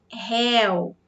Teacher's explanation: Agora, réu é diferente. Já é um monossílabo com som aberto. Esse ditongo, ele está aberto.